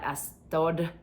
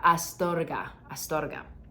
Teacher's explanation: we have that R that sounds like a D, a light D